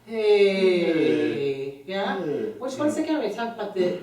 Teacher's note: the tiny little transition from an H unvoiced to the very front edge of the vowel